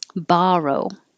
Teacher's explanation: the vowel is ah as in hot